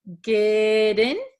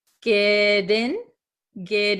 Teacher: so this T becomes a flap T so it sounds like a d